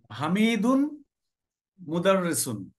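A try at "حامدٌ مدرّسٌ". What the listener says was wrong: Good.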